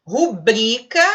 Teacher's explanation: Rubrica, ele marcou a sílaba forte aí, o bri.